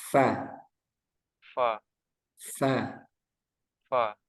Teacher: jangan seperti pa gitu ya. Ada aliran udaranya fa fa fa coba f f f fa.